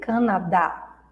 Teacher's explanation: Na segunda sílaba. Canada, aqui no Brasil, Canadá. Então a gente acentua a última sílaba.